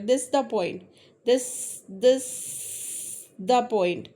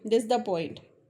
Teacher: ऐसा लग रहा है इज बोला ही नहीं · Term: डिलीशन